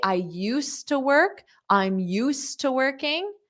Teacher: when I say I used to work, I'm used to working, you don't hear that D